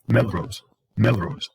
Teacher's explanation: the O doesn't become as long as when you say the word rose by itself · So this vowel is mid height, mid, back, tense, rounded.